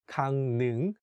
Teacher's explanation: although it has the consonant 를, which is for L sound, when we say it, we change it to N sound. So it becomes 강릉, not 강릉.